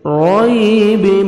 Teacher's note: یا ساکن سے پہلے زیر ہے، 1 سیکنڈ کھینچیں گے، رَيْبٍ، را کو مرزبر ہے، را کو موٹا کر کے پڑھیں گے ، یا لین ہے، دیکھیں نرمی سے، رَيْبٍ، تنوین کے بعد